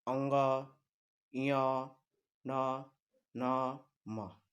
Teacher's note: अनुनासिक घोष अल्प प्राण, जैसे इसके अंतर्गत इसका उच्चारण जब होगा तो नाक का भी सहयोग होगा और इसमें श्वास कम और घोष यानी कि स्वर तंत्र का रगड़ भी होगा।